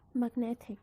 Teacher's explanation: The suffix is ic, magnetic. The stress moved from mag to net.